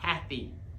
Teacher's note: The emphasis is on the first syllable, not the second.